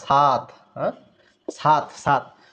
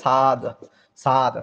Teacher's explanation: তাহলে অঘোষ ত, অঘোষ এটাকে ঘোষ করলে হবে সাদ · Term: ঘোষী ভবন